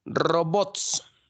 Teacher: la mayor fuerza de voz está en bots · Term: palabra aguda